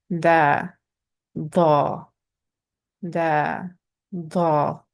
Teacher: The tip of the tongue touches the soft part behind the front teeth, the meaty part of the behind the teeth. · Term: Arabic dal